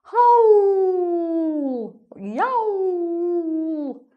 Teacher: This one: "howl" or "yowl", nice, round open vowel sound: "Howwwwwl, yowwwwwl", so it could be a dog who's very unhappy and the owner has left the dog at home all day on its own and it's getting very upset without human company.